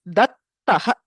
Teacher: So you have dad taha khari pare. When followed by a karkasha vyanjana, there is chartva, so it becomes dattah.